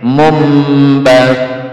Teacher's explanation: Mun, mun diganti M, ini bunyinya mim